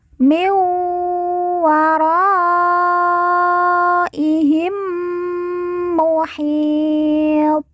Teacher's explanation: mim yang bertasjid kita baca ditekan ditahan dua harakat dan didengungkan